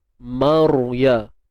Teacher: Ra mati sebelumnya baris atas. Jadi kita kena tebalkan ra. Angkat pangkal lidah kita.